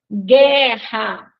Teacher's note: letra que não tem som na nossa língua né guerra guu vejam que nós não escutamos o som do U né Então aí a gente tem guu que é um dígrafo